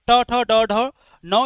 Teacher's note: ट, ठ, ड, ढ, न ये सभी मूर्धा से।